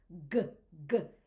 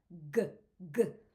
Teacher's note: It comes from the back of your throat.